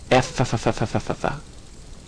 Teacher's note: Because we're pressing our teeth against our lip to make these sounds, we call these sounds that our teeth help make labial dental. Labial and not bilabial because only one lip is involved, and dental because the teeth are involved.